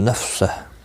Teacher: نفسہ ساکن پڑھیں گے وقف کی صورت میں